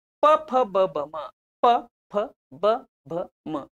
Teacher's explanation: वरचा ओठ आणि खालचा ओट ओटाला होट लागतो म्हणून याच उच्चार स्थान आहे ओष्ट्य